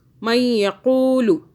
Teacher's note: مَن یقول، لام کو نہیں کھینچنا، دھیان کیجئے. مَن یقول، قاف کو موٹا پڑھیں